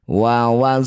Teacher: Wahayina ya sukun didahului fathah. Baca lembut. Namanya huruf lin ya huruf yang harus dibaca dengan lembut. Berikan huruf vokal i.